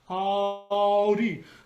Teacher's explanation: Ow, that's a diphthong. It's an ah, a bright ah, open ah vowel, and then it connects to an oo, but it's on one syllable.